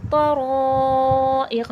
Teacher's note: तवा हुर्फ़ मुस्तआलिया है, मोटा हुर्फ़ों में से मोटा करके पढ़ा जाएगा। रॉ पे भी ज़बर है, रॉ भी मोटा करके पढ़ा जाएगा।